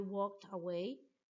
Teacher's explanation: The ID verb ending sounds like a T, walked, even though it ends in the letter D.